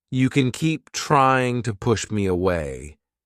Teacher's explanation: To is reduced to the schwa sound, and we don't pronounce the ing ending in the word trying. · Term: reduction